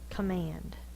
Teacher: It's actually the schwa because it's in the unaccented syllable